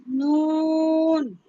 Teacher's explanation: জিহ্বার আগা তার বরাবর উপরে তালুর সঙ্গে লাগাইয়া